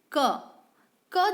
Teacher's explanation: क जब हम बोलते हैं तो क जो व्यंजन है उसमें आ की ध्वनि छुपी रहती है।